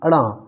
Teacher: अड़ा के उच्चारण में कंठ और नासिका की एक साथ मदद ली जाती है